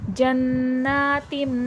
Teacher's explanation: نون پر تشدید آ جائے تو نون مشدد اور میم پر تشدید آ جائے تو میم مشدد. جناتم، یہ دیکھیں نون پر بھی غنہ ہوگا اور میم پر بھی